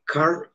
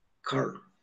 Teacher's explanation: Si yo, por ejemplo, digo carro en español, digo carro, es un fonema vibrante múltiple apicoalveolar, carro, o digo caro, vibrante simple apicoalveolar en español, pero digo en inglés car, ahí nos damos cuenta que el ápice de la lengua en el fonema para articular carro en inglés, en car, ya no es alveolar, sino palatal, el ápice va a la zona palatal, paladar duro.